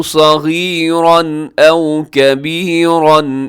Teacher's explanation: تنوین ہے، تنوین کے بعد حمزہ ہے تو یہاں اظہار ہوگا، کبیراً پہ بھی اظہار ہوگا یعنی غنہ نہیں ہوگا، تیزی سے پڑھیں گے